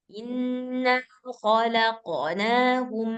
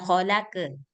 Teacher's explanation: Kalau misalkan ee qalqalah itu dia lebih mirip ke fathah bunyinya.